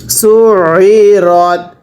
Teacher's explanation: আইনগুলো যখন উচ্চারণ করে পড়বেন তখন কিন্তু অবশ্যই গলার মধ্যে চাপ দিয়ে পড়তে হবে, তাহলেই তো আইনটা সহি শুদ্ধ উচ্চারণ হবে।